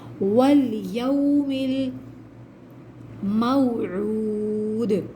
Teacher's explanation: واو ساکن سے پہلے پیش ہے، واو مدہ ہے، واو مدہ کو 2 کاؤنٹس کھینچتے ہیں